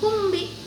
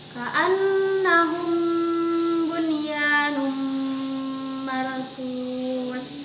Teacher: ini mah ada samar-samarnya dengan dengung di bibir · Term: ikhfa syafawi